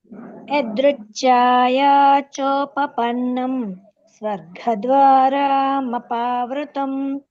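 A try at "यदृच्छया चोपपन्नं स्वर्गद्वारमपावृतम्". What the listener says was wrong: స్వర్గ ద్వారా అంటున్నారు, మళ్ళీ ఒకసారి దగ్గర వేలు ఇలా పెట్టుకుని చదవండి.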